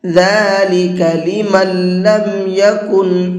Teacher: ذَلِكَ لِمَن لَّمْ يَكُنْ أَهْلُهُ حَاضِرِ الْمَسْجِدِ الْحَرَامِ، ذَلِكَ لِمَن لَّمْ يَكُنْ، یہ دیکھیے لمن، یہاں پر نون ساکن کے بعد میں لام پھر سے آ گیا ہے، اور یہ قاعدہ ابھی آپ کو اوپر بتایا ہے کہ نون ساکن کے بعد میں لام آتا ہے تو پھر نون نہیں پڑھا جاتا ہے، لام ہی پڑھا جاتا ہے